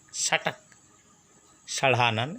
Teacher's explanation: षटक मूर्धन्य सब मूर्धा से आता है